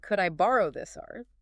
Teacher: Using that rising tone, could I borrow this art? It softens it, makes it sound less demanding · Saying it with a falling or flat tone might sound okay, but the rising tone definitely adds that layer of politeness, making it feel less like a demand.